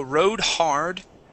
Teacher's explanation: make sure to pronounce that D there. It sounded like you said rode her.